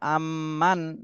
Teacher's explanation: মিম সাকিন হরকতের বামে মিমে তাশদি এজন্য এখানে ওয়াজিব গুন্না করতে হবে